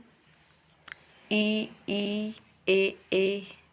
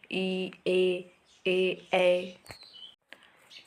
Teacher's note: जिन स्वर के उच्चारण में जीभ का आगे का हिस्सा उठता है उसे अग्र स्वर कहते हैं।